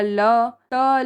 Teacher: यह वर्ड्स जो हैं वह हमारे दंत से प्रोनाउंस होते हैं।